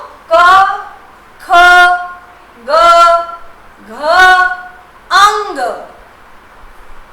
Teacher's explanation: ये सारे सीधे कंठ से, गले से हवा बाहर निकलती है